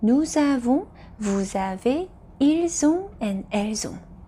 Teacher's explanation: Please note that I am doing the liaison for nous avons, vous avez, ils ont, and elles ont because the subject pronouns nous, vous, ils, elles are all ending in s so we need to link that sound to the first vowel in avons, avez, and ont. So when we link them it becomes nous avons, vous avez, ils ont and elles ont.